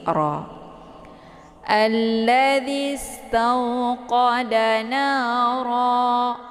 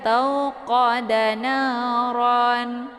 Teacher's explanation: cara baca mad iwadnya itu dipanjangkan 2 harakat, kemudian dihilangkan 1 harakatnya atau 1 baris. Jadi ra.